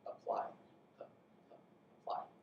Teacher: pun and apply are aspirated, spun and topple aren't.